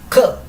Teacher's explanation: Ya. Y esta K realmente igual se dice K, pero se dice con más expulsión de aire.